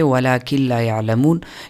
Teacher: نون کو لام میں مدغم کیا لیکن غنہ اس میں نہیں ہوا، آواز خیشوم کی طرف نہیں چلی گئی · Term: ادغام بلا غنہ